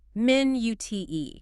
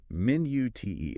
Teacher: try stressing the second syllable on minute